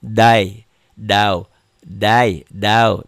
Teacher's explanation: inilah yang dalam bahasa Indonesia disebut diptong ya diptong apa tuh ya diptong A dan i i a dan u